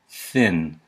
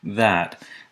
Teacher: you can feel the difference in your voice box you can feel the voicing